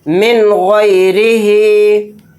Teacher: اس کو غلط اس طرح سے پڑھتے ہیں لوگ جو کہ نہیں پڑھنا ہے، من غیرہی، یعنی نون کو ناک میں بہت دیر غنہ کیا، تو یہ غنہ نہیں کرنا نون کے اندر، اس کو جلد پڑھنا ہے، من غیرہی۔ یا واو زبر یو، میم زبر ما، یوم، حمزہ زیر ای، یوم ای، ذال دو زیر ذن، یوم اذن، عین زبر ع، لام یا زبر لی، علی، ہا الف زبر ہا، علیہا، یومئذ علیہا۔ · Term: اظہار